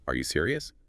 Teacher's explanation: If you say are you serious? Flat. It barely sounds like a question. But add that little upward flick at the end.